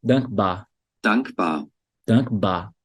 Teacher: Tá vendo que você não puxa o R no final?